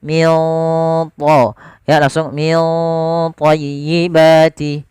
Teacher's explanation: Kemudian lafal min thayyibati ada bacaan ikhfa. Nah, ini ikhfanya langsung ke huruf tha, ditebalkan, maka ikhfanya agak tebal.